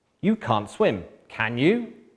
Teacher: So in this case, rising intonation pattern, I'm not sure if this person can swim or not.